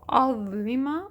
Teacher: زبان تھوڑی سی باہر آئے گی، زبان کا سرا اوپر کے دانتوں کے سروں سے ٹکرائے گا